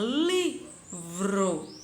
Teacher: Então, eu tenho vro, que é átona, e eu tenho li, que é tônica.